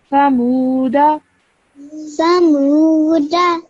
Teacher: this waw is a waw madda. So you stretch that for 2 seconds.